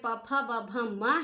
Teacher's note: प फ ब भ म हैं वो ये पूरे ओष्ठ से बोले जाते हैं, और उ और बड़ा उ जो है ये भी ओष्ठ से बोले जाते हैं।